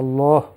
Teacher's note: লাম উচ্চারণ মোটা করে করতে হবে আল্লাহ উনার যেন টাফ হয়ে যায় তো এভাবে যদি না পড়েন